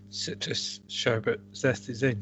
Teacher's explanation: It's the citrus ending with an S going straight into a sh sound